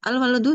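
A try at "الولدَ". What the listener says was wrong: Al-walad. Iya, tapi harokatnya belum tepat.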